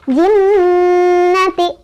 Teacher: Nah, sebabnya karena ada huruf nun bertasydid, huruf nun bertasydid masuk huruf gunnah. Dibacanya didengungkan ya sambil ditahan dengungannya 2, 3 atau 4 ketukan.